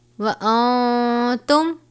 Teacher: نون ساکن ہے، اس کے بعد حرف اخفا میں سے تا ہے، یہاں پر اخفا کریں گے